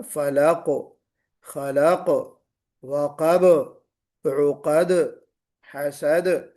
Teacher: آخری حرف پر جب ہم ٹھہر رہے ہیں تو قلقلہ کے ساتھ ٹھہریں گے